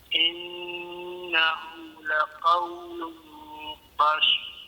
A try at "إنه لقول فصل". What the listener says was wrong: Ya, kena tebal sikit.